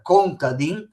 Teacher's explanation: Contadino in Veneto diventa contadin, quindi l'accento è sull'ultima I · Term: parole tronche